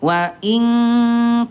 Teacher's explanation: Nah, tapi tingkat kesamarannya Bunda adna darajatil ikhfa. Derajat kesamarannya ayah bunda rendah lebih banyak dengungnya · Ab'ad itu artinya jauh karena hurufnya berjauhan. Nun ada di ujung lidah, kaf ada di pangkal lidah. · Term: ikhfa ab'ad